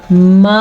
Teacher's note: तकरीबन 2 से 2.5 सेकंड तक ये मद लंबी होती है